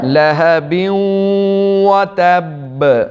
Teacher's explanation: با کے اوپر قلقلہ کریں گے اور ساتھ شد بھی ہے، اس لیے سختی سے پڑھیں گے